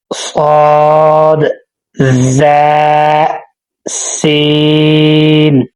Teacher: زبان کی نوک سامنے اوپر نیچے دو دانتوں کے اندرونی کنارے سے ادا ہوتے ہیں۔